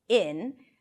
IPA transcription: ɪn